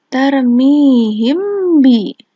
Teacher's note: Jika mim sukun bertemu dengan ba, maka mim sukun dibaca samar-samar di bibir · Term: ikhfa syafawi